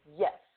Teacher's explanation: Y, palatal, your tongue's bed touching the roof of your mouth